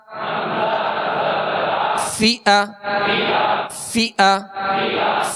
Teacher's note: فا کو جب ادا کریں گے تو اوپر کے جو دو سامنے والے دانت ہیں اس کے کنارے اور نچلے ہونٹ کا تر حصہ، یہ مخرج ہے، یہ نکلنے کی جگہ ہے فا کے۔ فا زیر فی، حمزہ زبر ا، فی ا فی ا، حمزہ پر جھٹکا بھی نہ ہو، جیسے فی ا ایسے جھٹکا نہیں دیں گے بلکہ اس کی زبر ادا کریں گے تو آواز اور منہ کھول کر اور بغیر کھینچے ادا کریں گے۔